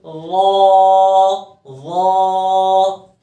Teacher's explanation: ظا جو ہے وہ مخرج کے اعتبار سے نرم ہے لیکن آواز موٹی آئے گی کیونکہ موٹے حرف میں سے ہے، ٹھیک ہے، تو اس کو پڑھیں گے ظا ظا۔